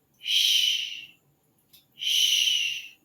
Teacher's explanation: It's a long sound, whereas the CH, ch, very short. But the SH, shh, shh, it's a longer sound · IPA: ʃ